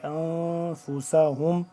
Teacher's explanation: إلا انفسهم اس پہ اخفا کیا ہے یعنی کہ اخفا کریں گے ناک کے اندر لے جا کر پڑھیں گے